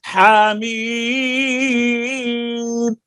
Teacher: ہا کو ایک الف اور میم کو چار الف